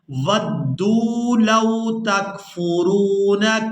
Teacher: دال کو واو مدہ کی وجہ سے کھینچ کر ادا کرنا ہے